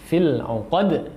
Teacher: pantulkan di akhirnya huruf dal sukun, ya, ketika kita mewakafkannya, fil 'uqad, seperti itu.